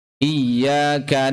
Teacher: 'Ayn keluar dari tengah tenggorokan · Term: huruf 'ayn